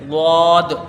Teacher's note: یہ ضاد ہو گیا حرف عربی کا، اس کے بارے میں جو ہے یہ کہا جاتا ہے کہ یہ حرف بڑا مشکل ہے، اور ہے بھی، اس کا مخرج جو ہے وہ لمبا ہے، اس کا مخرج بھی ہم نے لکھا ہے۔ ضاد کا مخرج زبان کی کروٹ اوپر کی 5 داڑھوں سے مل کر ادا ہوتا ہے، یعنی 5 داڑھیں زبان کی کروٹ کو اوپر کی 5 داڑھوں سے ملایا جاتا ہے تب یہ ادا ہوتا ہے، اس کی ادائیگی ضاد اس طرح سے یہ ادا ہوگا۔